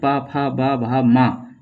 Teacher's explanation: तो प वर्ग के व्यंजनों का उच्चारण स्थान बोल के भी देख लिया करो। यदि बोलते हैं तो दोनों ओठ आपस में मिल जाते हैं। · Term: ओष्ट वर्ण, ओष्ठ वर्ण